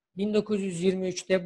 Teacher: Ç ve D sesi burada çarpışmışlar ve Ç sesi D'yi T'ye dönüştürmüş. O yüzden 1923'te diyoruz. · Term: ünsüz benzeşmesi